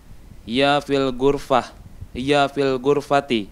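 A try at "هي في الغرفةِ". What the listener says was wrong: Hiya fil ghurfati. Hidupkan semua harokatnya.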